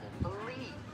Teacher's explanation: when I said believe, I'm kind of prolonging that stress syllable, Yes. that second syllable.